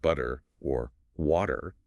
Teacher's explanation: >> It's like skipping a stone across water. Your tongue just briefly bounces off the roof of your mouth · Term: flap T